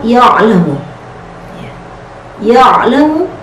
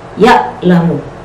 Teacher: huruf ain itu keluar dari tengah tenggorokan